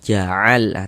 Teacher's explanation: Kemudian lam mutlak dia dibaca izhar, terbaca jelas ja'al, terbaca huruf lamnya seperti itu.